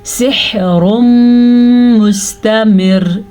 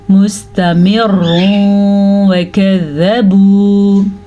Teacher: را باریک پڑی جائے گی. اگر ہم یہاں پہ وقف نہیں کریں گے تو را پر پڑی جائے گی